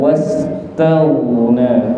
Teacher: Wastaghna ghain sukun niku sebisa mungkin jangan dikolkolahkan wastaghna, tapi dialirkan wastaghna, okay?